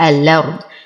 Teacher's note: أصل الكلمة الأرض بتحقيق الهمز، لكن ورش يقوم بحذف الهمزة ونقل حركتها للساكن الذي قبلها وهي اللام القمرية، فتصبح الأرض، تحرك بالفتح لأنه حركة الهمزة.